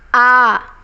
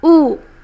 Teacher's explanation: इसमें दीर्घ स्वर में थोड़ा सा अधिक समय लगता है, इसका 2 गुना समय इसमें लगता है।